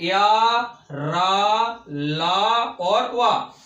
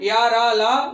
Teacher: ये चारों ही हमारे होते हैं सघोष अल्पप्राण।